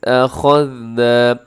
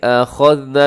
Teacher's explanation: اس آیت مبارکہ کے اندر دیکھیے گا وَإِذْ أَخَذْنَا، یہاں پر کیا ہے کہ أَخَذْنَا میں خا اپنے موٹا پڑھنا ہے اور آگے ذال کو باریک بھی پڑھنا ہے، اس میں سیٹی بھی نہ ہو